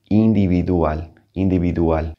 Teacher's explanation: A V in Spanish has kind of a soft B sound